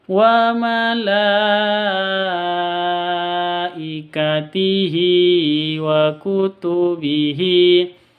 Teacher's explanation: Wa malaikatihi ada mad bertemu dengan hamzah di 1 kata. Mad wajib panjangnya harus 5 ketuk.